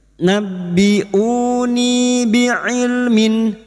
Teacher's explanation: Nabbi'uni bi'ilmin, bi'ilmin kasrah tanwin bertemu hamzah idhar halqi. Kasrah tanwin atau kasrotain dibaca jelas tanpa mendengung